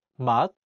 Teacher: In the word 맛, meaning taste, the 시옷 is in the 받침 position, so it's pronounced as 트.